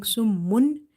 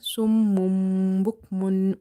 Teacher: You will change the sound of noon sakin or tanween into mim. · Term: iklab